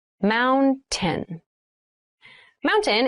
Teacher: when you pronounce this word in fast speech it sounds like mountain the t sound is reduced